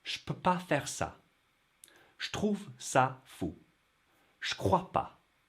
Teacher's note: So when je combines with one of those sounds, peu, te, que, in those three examples, it becomes more like sh.